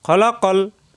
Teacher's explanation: খালাকাল হবে না খলাকল আলিফ টান